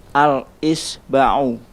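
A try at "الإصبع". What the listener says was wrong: Pakai sad. Al-isba'u. Sekali lagi.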